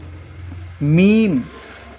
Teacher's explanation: دونوں ہونٹ کی خشکی سے مل کر میم ادا ہوتا ہے